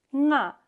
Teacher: That is a high tone, because Tibetan has a difference in the high or low tones. So you have to hear nga as a high tone, but here I is a low tone, nga, which means it vibrates more the sound in the throat.